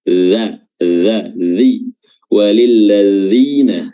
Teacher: huruf dalal dza makhrajnya adalah ujung lidah diapit kedua atas dan bawah